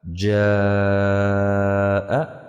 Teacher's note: حروف مدہ کے بعد اگر حمزہ اسی کلمے میں ہو تو اسے مد واجب کہتے ہیں۔ اس کی مقدار 3 سے 4 الف کے برابر ہے، جیسے جیم الف مد زبر ج، حمزہ زبر ا، جاء۔